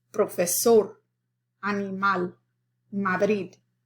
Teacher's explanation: the accent or the stress is on the last syllable rather than the second to last.